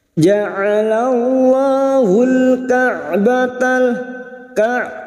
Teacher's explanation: huruf ain yang memiliki sifat tawassud dan jahar jangan samakan dengan hamzah.